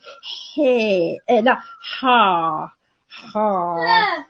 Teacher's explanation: go again i mean further in articulating i mean sounds then you will end up having a voiced pharyngeal fricative